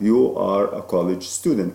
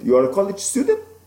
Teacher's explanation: I said the same words but with my raising pitch at the end you are a college student and that now makes it instead of a statement it makes it a question